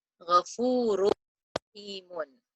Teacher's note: we have to drop the noon from the do pesh, from the dhammatain, and we join the sound with the ra, shadda. Ghafurur rahimun, without holding the sound for 2 counts.